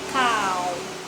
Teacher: Nah, konsonan rumusnya terpenuhi ya, syaratnya terpenuhi, konsonan kelas tinggi, ada maktun my egg, sehingga dia dibaca kau tapi dengan nada rendah ya